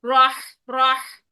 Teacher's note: हा साकिन आ गया, सांस और आवाज दोनों जारी, ठीक है। रह रह रह, ये करना है ठंडी सांस के साथ।